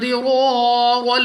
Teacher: الف سے پہلے زبر، الف مدہ، 2 سیکنڈ تک کھینچ کر پڑھیں گے۔ · ضاد مستعلیہ میں سے ہے، پر پڑھنا ہے موٹا، را پر زبر، را کو پر یعنی موٹا پڑھیں گے۔